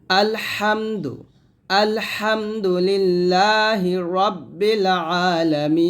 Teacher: এই হা এবং আইন দুটা উচ্চারণই কিন্তু হলকের মাঝখান থেকে চাপ দিয়ে নিয়ে আসতে হবে